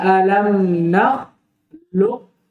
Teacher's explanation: Qaf dengan kaf, mutaqaribain ay fil makhraj. Keduanya dekat dalam makhraj, maka wajib diidgham. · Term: idgham shaghir